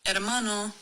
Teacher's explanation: You go straight to the vowel. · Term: silent